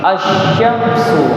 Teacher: Alif lam bertemu dengan shin. Tidak dikatakan al-syamsu. Tidak boleh bilang al-syamsu, tapi asy-syamsu.